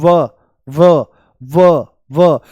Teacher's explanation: तो जो ऊपर वाले दांत हैं ये होठों से मिल जाते हैं · इसके उच्चारण में दांत होठों को स्पर्श करते हैं · दांत और होठ दोनों से इसका उच्चारण होता है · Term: दंत ओष्ठ